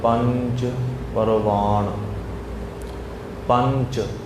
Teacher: ਟਿੱਪੀ ਲਾ ਕੇ ਨੱਕ ਦੇ ਵਿੱਚੋਂ ਆਵਾਜ਼